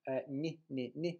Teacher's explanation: quite similar to the English n, except that the tongue is slightly raised to the hard palate. This is what this superscript J represents, that it's the tongue is in the position of ye. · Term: softened